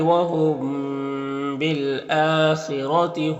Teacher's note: یہاں پر میم ساکن کے بعد با ہے تو اخفاء شفوی ہوگا، میم کو غن اور اخفاء کے ساتھ میں پڑھیں گے.